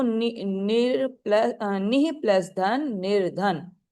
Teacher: निह प्लस धन, vibrate हो रहा है ना वोकल कॉर्ड, हवा आ रही है, तो निह प्लस धन, तो ये क्या बन जाएगा, रा बन जाएगा। विसर्ग आफ्टर ई ऊ becomes र before a voiced consonant. ठीक है, तो रा बन जाता है, तो निर्धन हो गया।